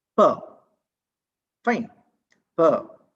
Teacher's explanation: both the lips have closed the oral passage, and it gets released to the outer atmosphere with an explosion